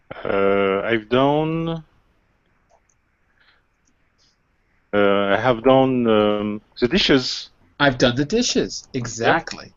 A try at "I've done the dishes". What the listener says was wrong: I've done the dishes. Exactly.